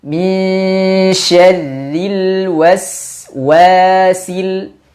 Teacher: fathah tapi dibaca dengan monyong dan dipanjangkan dua harakat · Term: wau